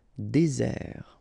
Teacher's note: this Z sound just because you get one S between the two vowels